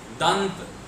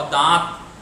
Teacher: जब आप दंत बोलेंगे तो नाक में झनझनाहट स्पष्ट महसूस होगी। लेकिन जब आप दांत बोलेंगे, जब आप दांत बोलेंगे तो झंझनाहट कम हो जाएगी। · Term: अनुस्वार